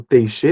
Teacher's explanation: há tanto t quanto x ali em um único som. É um som só. Então aqui esse segundo que é o T e o X é um som apenas, é o som de ti.